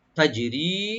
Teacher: তা ওপেন থাকবে, জিমটাকে একটু ইকু করতে হবে, তাজি, তাজি, রি একালিপ টানবেন, রাকে পাতলা করে একালিপ টানবেন